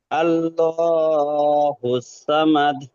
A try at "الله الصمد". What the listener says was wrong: আল্লাহু সমাদ সমাদ এটা সামাদ নয় সমাদ